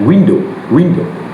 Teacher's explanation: In American English, the nucleus is posterior, which is the back and rounded, starting much closer to a true o sounds.